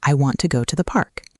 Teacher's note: in the sentence, I want to go to the park, the stressed syllables are want, go, and park.